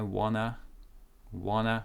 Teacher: so again n is stronger than d d gets cancelled